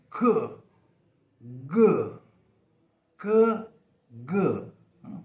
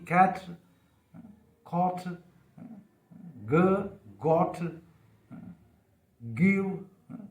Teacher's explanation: जो back of the टंग है वो सॉफ्ट पैलेट के बिल्कुल नज़दीक आ जाती है और कुछ देर वहाँ एयर ब्लॉक होती है